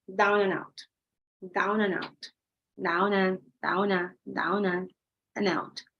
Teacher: The D doesn't sound, remember, because of the elision.